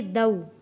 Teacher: واو ساکن سے پہلے زبر، حروف لین ہے، جلدی اور نرمی کے ساتھ پڑھیں گے